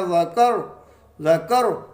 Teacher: اور جب وقف کریں گے تو را کو ساکن کر دیں گے، یہ پڑھا جائے گا ذکر ذکر۔ وقف کی صورت میں بھی را موٹا پڑھا جائے گا